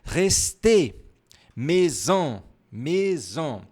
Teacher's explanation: Se por acaso tiver mais de um acento a palavra, a tônica, ou seja, você vai pronunciar mais forte no último acento.